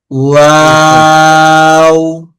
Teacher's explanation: ওয়াও বলার সময় ঠোঁট গোল হবে। ওয়াও। ঠোঁট গোল অবস্থা থেকে শুরু হবে এবং শেষে ওতে এসে আবার ঠোঁট গোল হয়ে শেষ হবে।